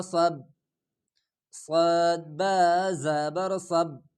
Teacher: سین والی سٹی کی آواز کو موٹا کر کے صاد ادا ہو جاتا ہے